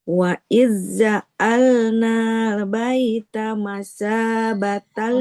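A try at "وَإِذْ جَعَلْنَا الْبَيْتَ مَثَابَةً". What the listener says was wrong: Nunnya nggak panjang. tidak ja'alnal. Nunnya nggak boleh panjang. ja'alnal. Memantul. Masih memantul. Nggak boleh memantul. ja'alnal. Huruf lam. Nggak boleh ja'alnal. Nggak boleh. Karena bukan huruf qalqalah.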